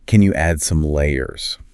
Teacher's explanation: this is a question. So that rising intonation at the end is going to be important.